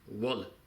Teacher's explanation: a B changing into a W sound is also a characteristic feature of Amdo-Tibetan. Okay, instead of a B in the Lhasa dialect, let's say for example, we have a W sound in Amdo-Tibetan.